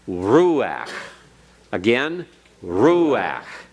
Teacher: you put the accent on the roux and the ah you back off of the emphasis